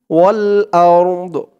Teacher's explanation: দদের উচ্চারণটা লাস্টে একটু ভাসবে